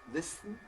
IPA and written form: ˈlɪsn̩ (listen)